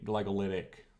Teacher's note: I should actually say glagolitic because there's no th there